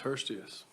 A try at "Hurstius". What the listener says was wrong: Also, just to correct everybody, my last name is actually pronounced Hurstis. The second I is not.